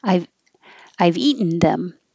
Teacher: It can be a syllabic N and say eaten. So eat, put your tongue up for the T and then go n.